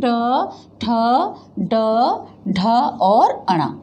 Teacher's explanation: और इसका इस्तेमाल रेट्रोफ्लेक्स कहलाता है, ये जब जिह्वा थोड़ी सी मुड़ जाती है, दंत तालु को छूती और झटके से नीचे आती है, तब यह हमारे लिए मूर्धन्य की श्रेणी में आता है।